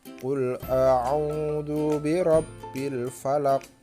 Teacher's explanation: Misalnya nih di ayat 1 Qul a'u, nah u-nya harus panjangnya 2 ketuk · qafnya yang terakhir itu harus dibaca qalqalah, harus dipantulkan.